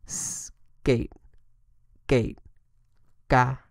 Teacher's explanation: k is unvoiced and aspirated it's like saying the word skate without the S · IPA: /k/